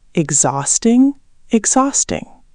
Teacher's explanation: The H is silent and the stress is on the second syllable.